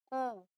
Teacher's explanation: جب واو ساکن سے پہلے دمہ آ جائے تو اس واو کی آواز کو 2 کاؤنٹس لمبا کر کے پڑھیں گے او. یہ اس کا فارمولا ہے، اسے واو مدیہ کہتے ہیں.